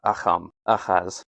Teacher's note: Achaz in Greek could be rendered as a K sound, but also more commonly I hear it as a ch or a ch. So Acham, Achaz.